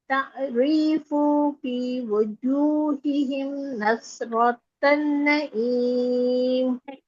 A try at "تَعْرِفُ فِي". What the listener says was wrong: तारीफू में फा का पेश लंबा हो रहा है। तारीफू फी